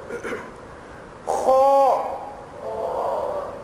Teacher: خو، یہ آپ نے اپنے منہ کو تھوڑا سا گول، پورا گول نہیں کرنا، تھوڑا سا گول ایکشن دینا ہے اور آواز کو تھوڑی سی بھاری کرنی ہے اور اوپر کی طرف آواز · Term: آواز موٹی